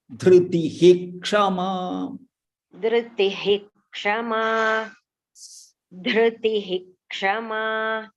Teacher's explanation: Here, Visarga followed by ksha. There is special rule for this. When it comes, you should chant it fully. Full Visarga you should chant it.